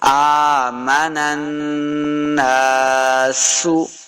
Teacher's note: نون کو نون مشدد کے سامنے لانا ہے اور غنہ کریں گے